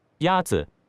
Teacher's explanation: The first tone is a high-level tone.